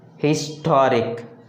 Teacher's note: Then the stress falls on the second syllable from the end.